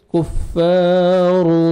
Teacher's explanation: گے، فا الف مد ہے 1 سیکنڈ فا کو کھینچنا ہے، را کو مرپیش ہے، را کو موٹا کر کے پڑھیں گے